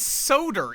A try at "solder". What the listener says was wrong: no, it's not soda. They say solder. You use technically there's an L in there. Technically it's solder,